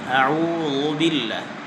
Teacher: আউযুর জালের মধ্যে আমরা একটা ভুল হয়, জালকে আমরা পাতলা না করে মোটা করে পড়ি, ল বানিয়ে ফেলি।